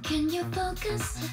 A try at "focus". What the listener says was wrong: 근데 그 focus 할 때 그 오 발음 조금 더 해주면 예쁠 것 같아. focus. 약간 가스 같이. focus.